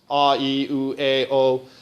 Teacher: it's not the pitch change, but it's the overtones that are changing